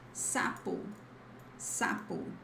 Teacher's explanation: When you have this single S at the beginning of a word or after voiceless consonants, sounds like this S sound as a snake